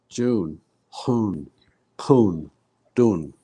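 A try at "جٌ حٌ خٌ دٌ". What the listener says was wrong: Okay, again, we're not pulling them. Jun, hun, khun, dun.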